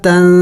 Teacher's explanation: یہاں پہ بھی نون ساکن ہے، اخفا کریں گے یعنی ناک میں آواز چھپائیں گے